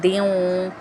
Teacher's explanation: ہے، دو زیر ہے، اور آگے واو مشدد آ رہا ہے، تو ہم یہاں پہ غنہ بھی کریں گے اور ہمارے ہونٹ بھی گول ہو جائیں گے